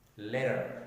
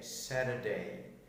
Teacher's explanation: American English වල මැදට T අකුර එනකොට ගොඩක් වචනවල උච්චාරණය වෙන්නේ ද කියන ශබ්දයෙන්.